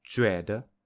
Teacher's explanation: the second syllable is definitely weaker than the first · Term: unstressed tone